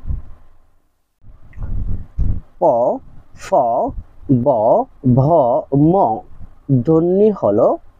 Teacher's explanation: প, ফ, ব, ভ, ম ধ্বনিগুলো হলো ওষ্ঠধ্বনি।